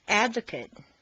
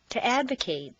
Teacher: A different change occurs when you go from an adjective or a noun to a verb. The stress stays in the same place, but the MAT in an adjective is completely reduced to mt, whereas in a verb, it's a full A sound, mate. Repeat. Advocate, to advocate.